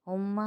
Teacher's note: میم مشدد ہے، میم مشدد کو ایک الف کی مقدار غنہ کریں گے۔